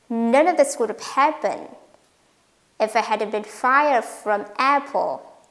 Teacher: only 3 words, happened, fired, apple, are stressed. They are main words in the sentence, and only main words are stressed. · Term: rhythm